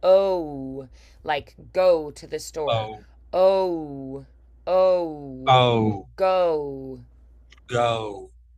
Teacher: usually we think of this as one sound, but in general American English, we tend to make it two sounds.